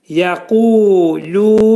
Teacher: Yə incə samitdir. Qaf qalın hərfdir. Bu hərfin məxrəci demək dilin sonu və dilçəyin başlanğıcındadır.